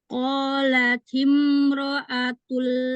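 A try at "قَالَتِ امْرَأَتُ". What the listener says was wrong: Tadi tuh mimnya tuh terlalu keras, neken bibirnya itu nggak boleh. Timro. Jadi jangan terlalu gimana ya tadi bacanya? Agak keras gitu.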